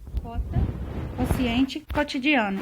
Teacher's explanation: Há uma tendência em não se pronunciar o U em palavras como cota, quociente, cotidiano. Não é quota, nem quociente, nem cotidiano. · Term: U mudo